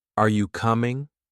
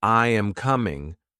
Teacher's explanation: when I ask a question like, Are you coming? my voice goes up at the end. But when I say, I am coming, my voice goes down. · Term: intonation